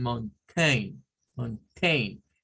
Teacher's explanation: en el diptongo AI, como por ejemplo en mountain, mountain, que se puede decir con schwa o sin schwa